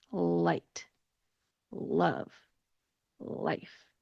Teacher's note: When I pronounce those words, my mouth shape is very different from the dark L sound. So the light L sound is when your tongue goes between your teeth